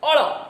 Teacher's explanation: અળ એ મૂર્ધન્ય પાશ્વિક છે.